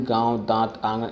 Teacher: अनुनासिक के स्वरों के उच्चारण में वायु या ध्वनि मुख के साथ साथ नाक से भी निकलती है, जैसे गांव, दांत, आंगन इत्यादि।